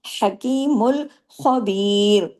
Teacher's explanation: ہاں کو گلے سے پڑھنا ہے، خواہ کو ہیوی پڑھنا ہے